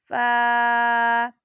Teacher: ऊपर के दांतों के किनारे और निचले होठ के तर हिस्सा से अदा होता है